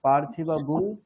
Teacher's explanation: যেমন এখানে এই যে পার্থিবা গুং, পরে রকার রয়েছে বলে এখানে গুং হয়। · একটা অনুস্বারের মানে জায়গায় আমরা গুং উচ্চারণ করি, এবং শুধুমাত্র যজুর্বেদে গুং উচ্চারিত হয়।